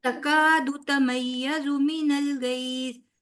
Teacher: فوراً دال کا مخرج چھوڑ کے تا کا پکڑ لینا ہے